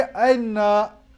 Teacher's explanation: ना हमज़ा पढ़ा जाएगा ना पूरा या पढ़ा जाएगा